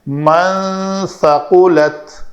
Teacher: اظہار نہیں کرنا، چھپانا ہے نون کی آواز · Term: اخفا